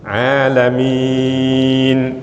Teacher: kita berhentikan mimnya harus panjang panjangnya seberapa melebihi dua harakat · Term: Mad Ar lukun